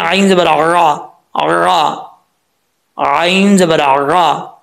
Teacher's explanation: गले के दरमियान से जो है वो आयन निकलती है , जिसको वस्ते हल्क कहा जाता है, यानी दरमियान का हल्क,